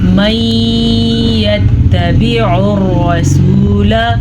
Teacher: मीम पे गुन्ना आ गया तो मीम पे शद है तो मीम पे गुन्ना लाजमी हो गया।